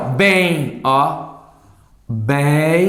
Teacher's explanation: bem nasaliza e eu ouço um i